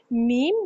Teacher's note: دونوں ہونٹوں کے خشک حصے سے یعنی با دونوں ہونٹوں کے اندر والے حصے سے اور میم دونوں ہونٹوں کے باہر والے حصے سے میم کی ادائیگی کی جاتی ہے